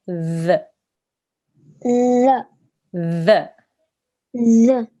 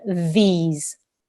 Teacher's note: so your tongue needs to be touching the top teeth and you need to make a the sound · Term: th sort of sound